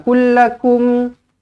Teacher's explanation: mim kosong bertemu dengan mim sabdu Idam mlain jumpa dengan mim sabdu kena buat apa kena rapatkan bibir dengungkan dua harakat